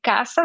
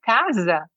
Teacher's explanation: ese sonido Z que en Brasil hay, bueno, en portugués hay y en castellano no lo hay